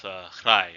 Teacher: It's the tones, the long and short vowels, and also the HL, the famous HL, the voiceless alveolar lateral fricative